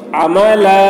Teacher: یہاں پر وقف کریں گے تو تنوین کو نہیں پڑھیں گے بلکہ الف کو پڑھیں گے, عملا ایسے کھینچ کے.